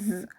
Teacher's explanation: 혀끝이 이빨 뒤에 가서 부딪히는데 마찰을 해요. 진동을 하는 그런 소리인데 똑같은 위치에서 소리가 나잖아. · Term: 반치음